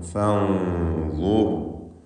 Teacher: സാക്കിനത്തെ നൂനിനെ ഇഖ്ഫ ഹഖീഖി നൽകി മറച്ചു മണിക്കുന്നു. മണിക്കലിൽ തഫ്ഖീം വേണം, ശേഷമുള്ളത് ള ആണ് എന്നതുകൊണ്ട് തഫ്ഖീം ചെയ്ത് ചിരിക്കേണ്ട ഇസ്തിഅലാൻ്റെ അക്ഷരമായ ളാഇന് മുമ്പിലാണ് സാക്കിനത്തെ നൂൻ ഉള്ളത് എന്നതുകൊണ്ട് മണിക്കലിലും തഫ്ഖീം വേണം.